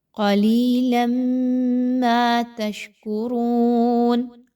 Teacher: میم مشدد کا غنہ کرتے ہوئے پڑھنا ہے۔